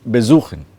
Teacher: The be is not stressed, it is the suchen that is stressed.